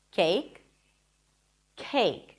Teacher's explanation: it feels like there is a little H right after the C sound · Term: aspirated